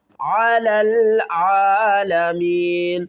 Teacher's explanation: عین کو ایک الف کی مقدار کھینچ کر پڑھیں گے